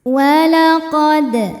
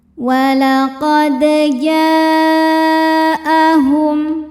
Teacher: Dal sukun hukumnya qalqalah sugro. Karena dalnya sukun asli dan ada di tengah bacaan maka dibaca memantul. Pantulannya kecil.